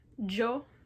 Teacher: Sometimes you'll hear the Y in this word pronounced with kind of a CH sound, yo. Sounds a little weird, you'll only hear it in a few countries, I think South America, maybe?